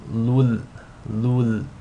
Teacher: So the rule is going to be idgham bila ghunna. You want to assimilate the tanween into the lam without any nasal sound. So it's as if the tanween is dropped and you're just saying lul, lul.